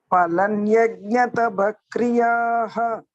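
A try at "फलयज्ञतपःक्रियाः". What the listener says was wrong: Not phalan, phalai. Phalayajna tapah kriyaha. Phalai. Phalayajna tapah kriyaha.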